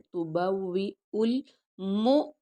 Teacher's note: اہلی کا اپنے گھر والوں سے، تبوئو، تبوئو، اب او کو ہم آگے لام کے ساتھ ملا دیں گے کیونکہ لام ساکن ہے